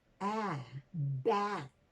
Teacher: the smiling vowel very characteristic of american english